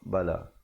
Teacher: Bala dibacakan 4 atau 5 harakat